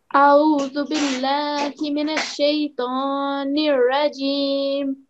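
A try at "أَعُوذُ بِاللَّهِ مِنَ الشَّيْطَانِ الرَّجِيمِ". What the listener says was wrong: That was excellent.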